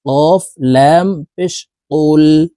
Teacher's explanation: এর উপরে পেশ হরকত আছে তো এই কফটি জজমওয়ালা লামকে ধরবে ঠোঁট গোল করে পেশ ওয়ালা হরকতটি জজমালা লামের সাথে উচ্চারণ করতে হবে এভাবে পড়বো কফ লাম পেশ কুল কফের উচ্চারণ জিহ্বার গোড়ায় তার